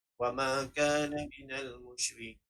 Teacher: Dan yang di terakhir ayat iaitu ia seakan-akan mad asli kerana kita boleh tengok huruf ya dan baris sebelumnya adalah baris bawah, tetapi kita ingin mewakafkan dengan nun. Dan ini dinamakan dengan mad arid lisukun kerana kita ingin mewakafkan huruf nun, dan dibolehkan dengan bacaan 2 atau 4 atau 6 harakat. Boleh pilih sama ada nak baca 2 atau 4 atau 6 harakat dengan bacaan wa ma kana minal musyrik.